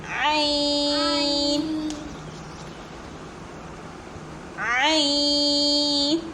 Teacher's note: हलक के बीच से पढ़िए आइन